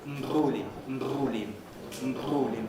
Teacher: The lips vibrate several times and they can be seen to do so. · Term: pre-nasalized bilabial trill